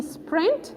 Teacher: The consonant after S in sprint is unaspirated. Once just preceded by one consonant, it lost that characteristic of being aspirated.